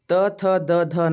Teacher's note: ಈಗ ನಮ್ಮ ನಾಲಿಗೆಯ ತುದಿ ಹಲ್ಲುಗಳಿಗೆ ಸ್ಪರ್ಶ ಆಗ್ತೈತಿ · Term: ದಂತ್ಯ